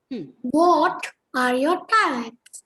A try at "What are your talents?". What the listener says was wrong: What are your talents? See, the question word, what is highlighted.